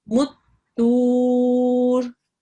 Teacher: you need to stretch the tu out for a little bit longer and then add a r sound at the end, okay, a ra sakin.